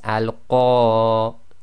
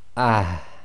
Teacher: Sometimes you can hardly hear the reciters doing this, but effectively you've got to have a slight ah sound right at the end. So on that first sentence there, it will be al-qari'ah, and you'll hear a slight breath, a slight ha at the end coming from the bottom of the throat. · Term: ta marbuta